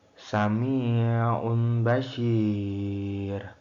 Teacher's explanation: Iqlab artinya mengubah bunyi nun sukun atau tanwin menjadi bunyi mim samar disertai dengan disertai dengung ketika bertemu huruf ba